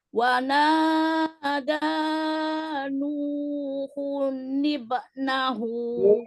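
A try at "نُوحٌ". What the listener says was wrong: Huknya jangan panjang. Nuhu. Jangan begitu.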